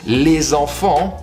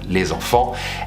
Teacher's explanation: with a little liaison between enfant and les, because enfant starts with a vowel